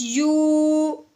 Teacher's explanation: واؤ ساکن سے پہلے اگر پیش آ جائے تو اسے ایک الف کے برابر لمبا کرتے ہیں